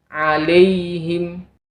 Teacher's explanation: fathah sebelum ya yaitu huruf lam harus kita benar-benar sempurnakan penyebutannya kalau kita tidak menyempurnakan penyebutannya maka huruf yang berharakat fathah sebelum ya akan terdengar seperti e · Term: bacaan Lin